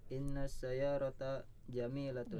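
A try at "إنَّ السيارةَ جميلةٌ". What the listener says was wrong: Iya, bagus.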